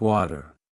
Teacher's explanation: In American English, the T sound between vowels often turns into a soft D sound. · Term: flap T